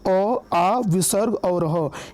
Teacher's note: इनका उच्चारण कंठ से होता है